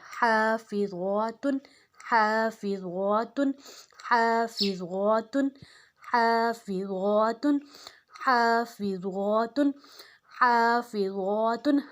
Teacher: क़ानिततुन क़ानिततुन क़ानिततुन क़ानिततुन क़ानिततुन क़ानिततुन क़ानिततुन हाफ़िज़ातुन हाफ़िज़ातुन हाफ़िज़ातुन। अब ज़ा मोटा है और ता दो पेश्तुन, ता पतला है।